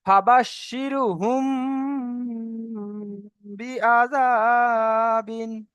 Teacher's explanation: মিম সাকিনের পরে যদি বা আসে, তাহলে সেটাকে গুণনা করে পড়তে হবে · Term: ইকফায়ে স্বাভাবী